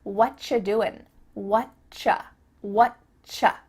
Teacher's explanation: And actually, we've cut out completely the word are and the word you just becomes "What you doing?" "What you doing?" You might notice too, extra tip, that the end of the word doing, that g also gets cut out